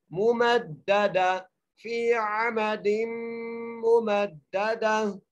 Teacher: दूसरी मीम को दाल से मिलाना है तस्दीर की वजह से और मजबूती से पढ़ना है